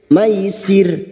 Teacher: Maisir, karena kita memilih waqaf di sini untuk menyesuaikan kemampuan nafas kita, maka bunyinya maisir. Ro yang dibaca waqaf, yang didahului kasroh, kita baca tarkik atau tipis. Maisir dengan ciri-ciri bibir yang tersenyum.